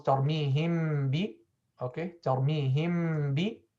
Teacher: close the lips on the mim and open them with a ba while applying long ghunna, a bit shorter than the longest ghunna of the idgham shafawi. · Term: ikhfa shafawi